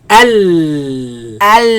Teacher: The sound escapes on the sides. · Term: lam